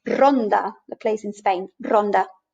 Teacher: actually roll it and it becomes then a succession of taps of the tip of the tongue against the front pallet as if we were drilling a hole in our wall that sort of rolling ronda the place in spain ronda this